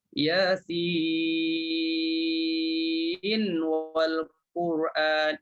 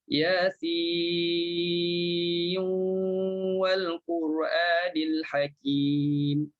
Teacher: Kalau baca Warash, lidah tak perlu pergi letak pada makhraj nun. Tak perlu. Yasin, cukup 6, terus muncung bibir mulut. · Kita dah masukkan nun dalam waw. Masukkan nun dalam waw. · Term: idgham